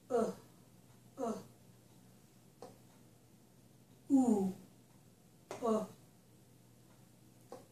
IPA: ʊ